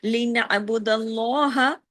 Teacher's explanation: اس میں اللہ کے نام میں لام ہیوی ہوگا